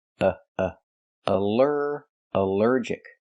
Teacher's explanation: the al is not pronounced all but pronounced uh like in cup and up because it's not stressed.